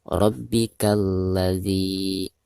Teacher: Dihukumi alif lam syamsiyah karena ada alif lam berhadapan dengan salah satu huruf syamsiyah. Maka cara membaca alif lamnya itu harus diabaikan atau tidak dibaca ya. Jadi dari bacaan K langsung ke la yang ada di depannya ya.